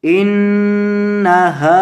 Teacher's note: नून पर गुना करेंगे और हा को लंबा करेंगे क्योंकि हा के बाद अलिफ मद्दा है